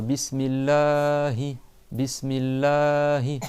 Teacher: Le A il dure 2 temps, 2 mouvements. Ce qu'on appelle en arabe des harakat. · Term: prolongation